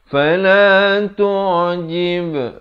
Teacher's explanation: Ain itu di pertengahan kerongkong.